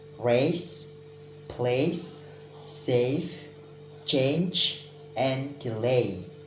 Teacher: this sound produced by combining two vowels e and i so you have to produce it in one play a for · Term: diphthong